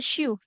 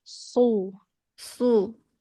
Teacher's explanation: huruf shad ini seharusnya walaupun kita belum bisa menebalkannya jadinya sin, jangan sya.